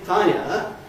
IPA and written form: ˋfaɪə (fire)